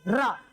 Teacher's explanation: रा में देखो ऐसी फड़फड़ाती है जीभ बोलने में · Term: प्रकंपित